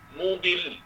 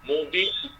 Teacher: Kita tekan sikit sebab lam bersabdu, intonasi suara tinggi sikit.